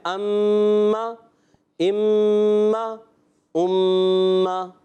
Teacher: حرکت لمبی نہیں ہونی پیارے بچے، اگر حرکت کو لمبا کریں یہ غلط ہو جائے گا